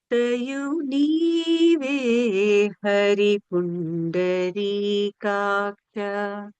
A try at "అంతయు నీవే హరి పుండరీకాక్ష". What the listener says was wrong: హరి అలా తేలిగ్గా అనకుండా కొంచెం బరువుగా అంటండి దాన్ని. అంటే కొంచెం వెయిట్ పెట్టమంటున్నాననమాట.